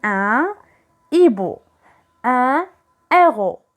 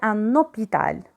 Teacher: h aspiré c'est à dire je ne peux jamais faire la liaison